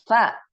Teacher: ujung lidah mengenai gigi seri pertama mengenai gigi seri pertama ee yang depan gitu kan kita ucapkan ee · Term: makhraj